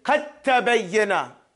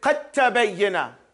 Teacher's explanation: You no longer pronounce the del. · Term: Idgham